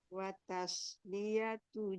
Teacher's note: Watas ta nggak boleh tebal. Yang tebal itu shotnya.